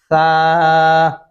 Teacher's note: दांतों के नीचे जबान ला के आप पढ़ेंगे